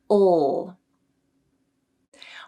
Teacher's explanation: the dark L might feel like you're making it in the throat instead of in the mouth it's a very low sound